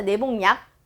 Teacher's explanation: 근데 니은 일단 첨가했어. 그러면 이 기억이 비음화의 현상으로 니은의 영향을 받아서 이응으로 바뀌어서 내복약이 되는 거죠